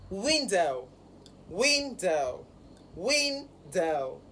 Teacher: So the stress is on the first syllable, window.